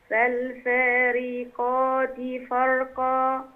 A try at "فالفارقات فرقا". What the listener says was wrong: إشباع الحركة بيؤدي لوجود حرف غير موجود، ما ينفعش فالفارقات، لأ، فالفارقات فرقا،